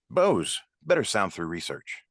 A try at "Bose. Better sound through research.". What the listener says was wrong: Still a bit, you're like almost question marking, like Bose. Should I get Bose? No, just Bose. What should I get? Bose.